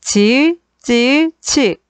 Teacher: 혓바닥과 센 입천장 사이에서 나는 센 입천장 소리